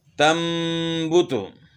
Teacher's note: ایک تو اس سے پہلا جو حرف ہے اس کو لمبا نہیں کرنا، اور دوسرا جو ہے نون کی بیچ میں ملاوٹ نہیں کرنی، بلکہ خالص میم جو ہے نا اپنے ادا کرنا ہے اور غنہ کرنا ہے اس میں ایک الف کی مقدار کے برابر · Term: اقلاب